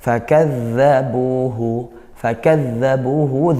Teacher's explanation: zal bertasydid ujung lidah ke gigi. Kadza, alirkan suaranya.